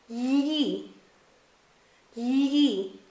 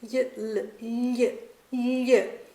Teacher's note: that sound is pretty much like a Y and L squish together and said really quickly